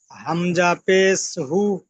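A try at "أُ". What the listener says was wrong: না, হামজা পেশ হু কেন হবে? হামজা পেশ উ। উ, হু নয়, উ। হর্ষও যেমন উ হয়।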